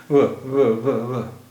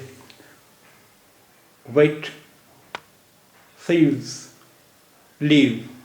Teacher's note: के दांत से टच करते हुए जो हम आवाज निकालेंगे व अगर हम उस वक्त निचले होठ को ऊपर के दांत से टच करें और फिर जो वा की आवाज निकालेंगे वो जो आवाज होगी वो वी की आवाज होगी